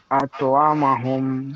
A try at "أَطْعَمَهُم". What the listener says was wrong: আতো না কিন্তু, আত। আতআমাহুম।